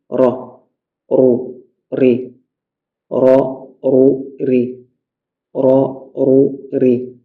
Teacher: il y a une répétition lorsque la langue elle tremble lors de la prononciation de la lettre R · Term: at-takrir